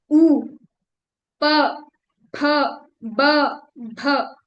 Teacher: अगर मैं मुंह खोल लूं तो मैं ये शब्द प्रोनाउंस नहीं कर सकती। प बोलने के लिए लिप्स टच हो ही रहे हैं। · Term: ओष्ठ